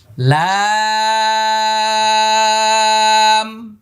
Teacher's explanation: শেষে মিম আসছে, ঠোঁট বন্ধ হয়ে যাবে।